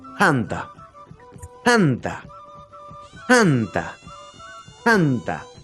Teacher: es una oclusiva aspirada, quiere decir que se va a pronunciar con un ligero soplido. Con un ligero soplido, ¿sí?